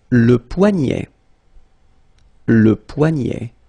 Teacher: this combination of ET at the end will basically open the sound